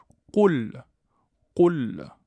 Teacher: le Qaf se prononce Qo, Qo et non pas Qe. Qe, c'est faux, donc on prononce Qo. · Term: lettre emphatique